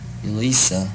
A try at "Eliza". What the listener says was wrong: so the Z I think you need to work on that Z little bit more